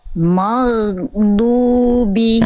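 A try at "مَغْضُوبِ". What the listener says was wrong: Nah, sedikit lagi itu masih ada masih ada G-nya. Jadi ghain itu bukan G. Kalau teman-teman menganggap ghain adalah G, jadi nanti dia suaranya terputus pasti mag. Bukan mag tapi mau, ngalir suaranya. Ghairil maghdubi.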